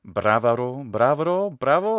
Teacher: the intervocalic ba becomes a va regularly in italian and other romance languages